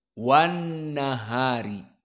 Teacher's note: Tidak dibaca lamnya pun idgam kepada Nun W nahari karena dia lam syamsiah mudgamah maka nunnya di sini dalam keadaan musyaddadah